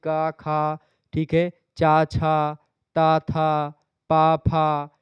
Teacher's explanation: ये आपके अघोष ध्वनियों में आते हैं